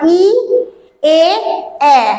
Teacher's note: এই 3টে ধ্বনি উচ্চারণের সময় ই, এ, এ জিহ্বা কিন্তু সামনের দিকে বেরিয়ে আসছে, অর্থাৎ এগুলি হচ্ছে সম্মুখ স্বরধ্বনি